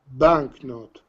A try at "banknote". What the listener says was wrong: Perfect again.